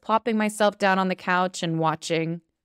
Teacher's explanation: That and sometimes turns into just a little N. It's barely a connecting word, putting them together.